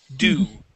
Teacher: it would not be a diphthong having two different vowel sounds there, but only one vowel sound